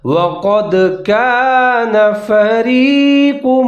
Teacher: كان فريق منهم، وقد قاف کو موٹا کر کے پڑھنا ہے، دال ساکن حروف قلقلہ کریں گے، یعنی کہ آواز کو ڈبل کر کے پڑھیں گے